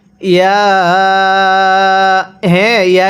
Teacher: ইয়া এর মধ্যে আমরা তিন আলিফ টেনে পড়বো